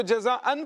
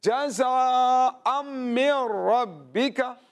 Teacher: چونکہ اس کے بعد میم آ رہا ہے تو نون ساکن کی آواز نہیں آئے گی